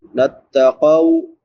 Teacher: قاف کے بعد واو لین ہے، واو ساکن ما قبل فتحہ یعنی زبر ہے تو اس کو نرمی سے پڑھیں گے